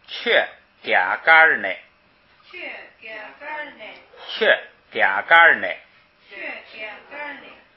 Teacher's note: 在第二音节呢不送气，所以读嘎儿。然后它不送气还不能从低往高处升，是吧？后边不升，所以还读成平声高调